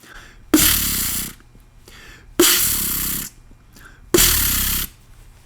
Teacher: I'm really putting a lot of force behind that rolled R